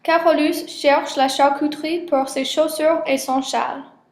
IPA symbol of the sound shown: ʃ